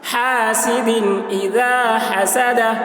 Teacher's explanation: حمزہ زیر ای، دال کے نیچے دو زیر کی تنوین ہے، تنوین کے بعد حروف حلقی میں سے حمزہ آ رہا ہے، اس لیے تنوین کو ظاہر کر کے بلا غنہ کے جلد پڑھیں گے. اس کو اظہار کہتے ہیں.